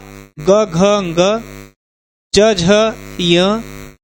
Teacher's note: तीसरा चौथा और पांचवा जो व्यंजन है, पांचवा व्यंजन जो है आपका, यह है आपका सघोष